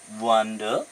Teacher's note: the last syllable is not more stressed than the first one